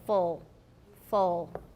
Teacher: it again it turns almost into a dark l like full if you make a very very back ooh you'll get a dark l as in full full with no alveolar contact okay um so